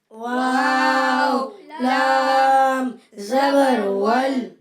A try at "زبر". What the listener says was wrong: زبر، غبر نہیں بولیں گے، واو لام زبر ول۔